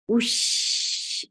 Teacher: And you will circle your lips for dhamma. As soon as you will pronounce sheen, your lips should be in a natural position, not in a dhamma position.